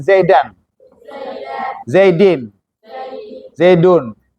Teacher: walaupun tulisannya tanwin tapi kan secara suara itu seakan-akan ada Nun yang sukun